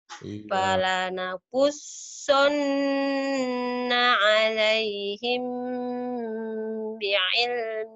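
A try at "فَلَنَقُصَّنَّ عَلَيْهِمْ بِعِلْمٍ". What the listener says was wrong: Nah, kunananya kan panjang juga. Kunnya udah bener, nanya ditahan juga.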